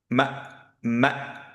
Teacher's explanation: কাস, ফিম, ধরে রাখবো ফিমটা, তারপরে আহ, হামজা সুকুন যেহেতু, এর জন্য শার্প স্টপ